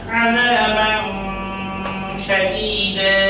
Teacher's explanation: এখানে এই তানবিন বিশিষ্ট বাকে কিছুক্ষণ নাকের মধ্যে ধরে রাখতে হবে।